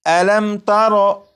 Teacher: جب میم ساکن کے بعد تا ہے تو اس میم ساکن میں غنہ نہیں کریں گے